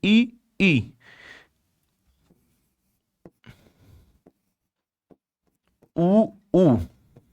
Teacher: इसमें मुख लगभग बंद ही रहता है। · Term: संवृत